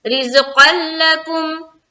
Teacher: یہاں پر دیکھیے قاف کو جو ہم لام سے ملا رہے ہیں، یہاں پر بھی ادغام ہو رہا ہے، لیکن یہ ہے ادغام تام جو کہ بلا غنہ کا ہوتا ہے